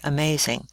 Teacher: The letter A has two different sounds in the word amazing. It has the schwa sound, almost like a short U sound, in the first syllable, and a long A sound in the second syllable.